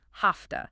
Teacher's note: Because the V in have is voiced, but the T in to is voiceless. The V often becomes voiceless too, sounding like an F. So have to becomes hafta.